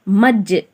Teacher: ஜீம் என்பது ஒரு கல்கலா எழுத்து, எனவே கல்கலாவை செவ்வனே செய்து , இரண்டு அசைவுகளுடன் ஓதவும்.